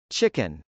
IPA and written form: tʃˈɪkən (chicken)